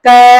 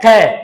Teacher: तो क में हवा कम निकलती है और ख में क्या होती है? अधिक।